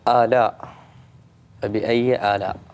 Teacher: هاي مد متصل، يعني لازم تمد أربع حركات. فبأي آلاء ربكما تكذبان، كل آية تتكرر طبعا في سورة الرحمن وايد، فلازم كل مرة تمد.